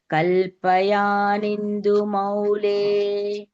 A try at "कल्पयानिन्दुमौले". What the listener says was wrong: Kalpayani Maule, Kalpayani Indu Maule, together Kalpayani Maule. That E should be heard as a Dirgha.